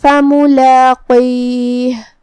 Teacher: یہاں حرف القاف ہے. قاف کی ادائیگی زبان کی جڑ اور تالو کے نرم حصے سے ہے. قاف حروف التفخیم میں سے بھی ہے تو ہمیں اسے بھاری آواز میں پڑھنا ہے.